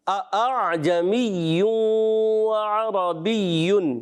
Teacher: دوسرا غلط طریقہ، دونوں حمزہ کو تحقیق سے پڑھ دیا، اعجمی وعربی، یہ بھی غلط ہو گیا۔